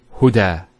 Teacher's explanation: There's the elongation as well, because the fatha followed by an alif. If this wasn't there, it will be huda, but huda with the alif.